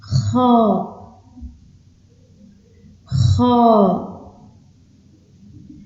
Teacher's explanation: on sort de l'air, mais en rugissant